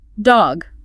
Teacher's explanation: There's a hard stop on that G sound. It's what we call a voice stop.